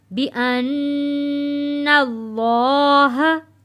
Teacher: نون تشدید والا ہے، غنہ ادا کرتے وقت ہم اللہ کے لام کو موٹا پڑھیں گے